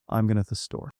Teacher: The important words are going and store. The rest gets kind of squished in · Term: stressing only the key words